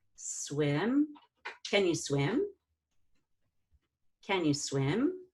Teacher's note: And then we have swim. Now with swim, you're just gonna do two short I's, but you break it up. One goes down, one goes up.